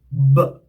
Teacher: how the air is coming out will tell you the mode of articulation, which is oral stop.